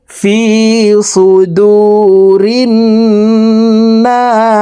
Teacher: গুন্নাহ নুন আলিফ জবর না সিন জের সি ফি সুদুরিন নাসি না 3 আলিফ টেনে সিনকে সাকিন করে ফেলবো